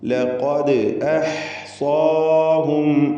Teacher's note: ലഖദ് ഖാഫിന് തഫ്ഖീമാണ്, ഇസ്തിഅലാഇൻ്റെ ഹർഫാണ്